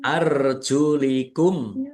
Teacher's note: Mim sukun bertemu dengan huruf alif. Bacaan izhar syafawi dibaca jelas.